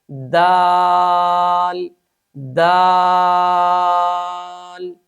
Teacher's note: इस्तफाल और इनफता की वजह से इस हर्फ को खूब बारीक अदा करेंगे।